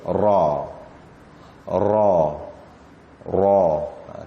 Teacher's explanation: Bila dia berbaris atas, dia agak tebal.